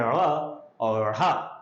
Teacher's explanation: ये मूर्धन्य, इनका मूर्धा से इनका उच्चारण होता है